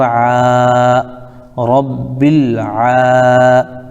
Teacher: پھر عین کے اوپر ہم دیکھ رہے ہیں کھڑا زبر ہے، کھڑا زبر الف مدہ کے برابر ہوتا ہے، اس کو ایک الف کھینچیں گے، جیسے عین کھڑا زبر آ، رب الع۔